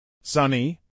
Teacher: a pronunciar en inglés por hablantes nativos sunny dos sílabas sunny acentuación en la primera sílaba